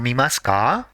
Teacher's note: add ka at the end with a rising intonation